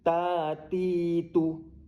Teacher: ta ti tu tu pendek tapi ta dengan ti panjang kan kerana ada huruf alif dan ya. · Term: mad asli